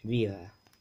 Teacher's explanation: Anytime there's that D between two vowels, right, it gets that voiced interdental fricative sound, th. And when it's spoken fast, that th disappears.